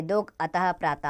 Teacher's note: विसर्ग का उच्चारण ह के समान होता है।